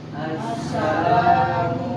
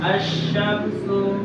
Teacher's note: alif lamnya tidak dibaca jelas, maka langsung ditasdidkan ke huruf setelahnya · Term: idgham syamsiyah